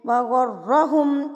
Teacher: را کے اوپر زبر جب آتی ہے نا تو را پر پڑھی جاتی ہے, را ہیوی پڑھی جاتی ہے, تو آپ نے یہاں پہ را کو پر کر کے پڑھنا ہے.